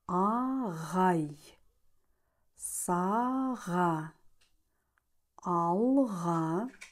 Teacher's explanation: артикуляция г аналогична к Но в отличие от него произносится с участием голоса Так же как и к он сочетается только с твердыми гласными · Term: звук г